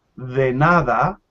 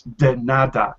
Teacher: we say de nada and not a strong D like in English